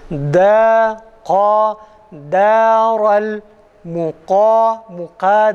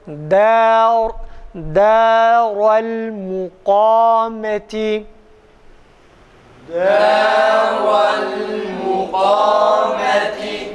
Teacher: Dal ince, kaf kalın olduğuna göre iki ayrı kelimede de olsa ard arda geldiği için hemen hissediyoruz. Daral muka değil, da değil.